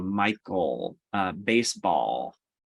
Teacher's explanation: you're actually making that l sound in the back of your throat particularly when it comes to the ends of words